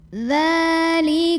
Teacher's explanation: Lalu berikutnya di sini ada hukum alif lam syamsiyah karena alif lamnya bertemu dengan huruf syamsiyah yaitu shin. Maka cara baca alif lam ini adalah tidak dibaca atau diidghamkan, dimasukkan langsung dari mim ke shin atau idgham syamsi.